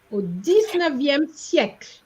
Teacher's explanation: You stop at the L. Because remember, an E at the end with no accent is silent. Okay. So you're not going to pronounce it.